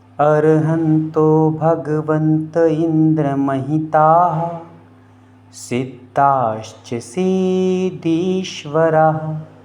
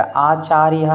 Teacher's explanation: हा का उच्चारण विसर्ग के साथ में बड़े ही अच्छे तरीके से स्पष्ट और गुंजायमान के साथ में होना चाहिए।